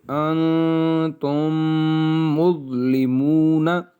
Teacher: میم ساکن کے بعد جب دوسری میم آ جائے تو یہاں پر ادغام شفوی ہوگا